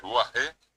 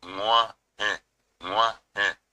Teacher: hay una consonante anterior que es la G nasal, la G de Nguaje.